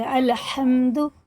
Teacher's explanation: ملائیں گے، کھینچیں گے نہیں، اور ہا میم سے ملاتے ہوئے، بڑا ہا ہے نا، یہ حرف حلق میں سے ہے، حلق کے درمیانی حصے سے